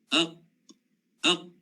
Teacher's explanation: bila kita matikan dia, aq, suara kita dah tak boleh pergi lagi dah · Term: syiddah